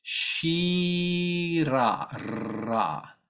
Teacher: And the R is flipped. Shira, ra, but flipped quickly.